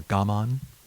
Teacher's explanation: in japanese would be more gamon with the emphasis on the first syllable